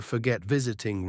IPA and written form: fəˈɡet ˈvɪz.ɪ.tɪŋ (Forget + -ing)